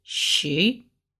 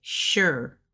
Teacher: I hear some people say she, and I hear some people say sure with a R, like on the end.